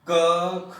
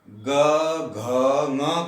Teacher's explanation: practically देख लीजिए, अघोष सघोष, जब हम क ख का उच्चारण करते हैं तो गर्जन पैदा नहीं होती, फिर ग घ ङ करते हैं तो उसके अंदर गर्जन पैदा होती